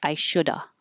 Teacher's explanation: those V's we just drop them and make an uh sound